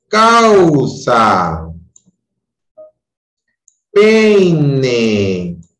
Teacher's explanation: En un diptongo decreciente, en este caso, el orden es distinto. Primero va la vocal abierta y luego la vocal cerrada. ¿Ok? Entonces, ahí la voz es decreciente.